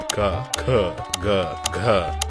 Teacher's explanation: ಇವು ನೇರ ನೇರವಾಗಿ ಗಂಟಲಿನಲ್ಲಿ ಹುಟ್ಟುತ್ತವೆ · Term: ಕಂಠ್ಯ ವೇಲಾರ್